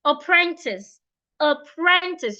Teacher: apprentice you're stressing the second syllable